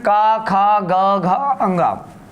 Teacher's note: जो का वर्ग है जिसमें का, खा, ग, घ, अंगा, इनको हम लोग कंठीय वर्ण के रूप में हम लोग जानते हैं।